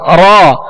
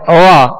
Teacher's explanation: مشابہت ادا کرنی ہے، کامل تکرار ادا نہیں کرنی، بس ہلکی سی کپ کپاہٹ ہو. جب را کو ادا کریں تو زبان اس کے جب مخرج میں لگے تو ہلکی سی کپ کپاہٹ ہو. را. اب اس کو تکرار کے ساتھ یعنی را یوں بھی نہیں پڑھنا اور بغیر مشابہت تکرار کے، بغیر کپ کپی کے بھی نہیں پڑھنا ورنہ وا بن جائے گا.